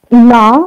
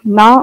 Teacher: Na with high tone means 5. Na with a low tone means 1